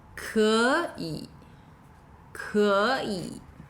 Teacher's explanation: 可 以 is two third tones, but when spoken together, it sounds more like a second and a third tone.